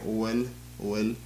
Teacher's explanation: you'll also notice that the O kind of blend together